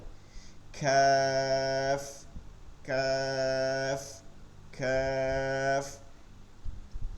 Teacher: কাফ এইটা গোড়া থেকে জিহ্বার গোড়া থেকে আরেকটু সামনে গিয়ে তালুতে লাগবে নরম ভাবে